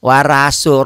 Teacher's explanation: daerah-daerah tertentu ro-nya jadi ra